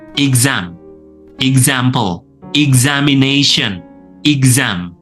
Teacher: Nah, yang kritis di sini adalah pada pelafalan X yang berubah menjadi Z ya. Jadi tidak S tetapi menjadi Z